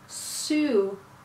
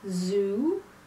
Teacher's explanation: the next pair is a simple one again s and Z so the s is unvoiced and the Z is voiced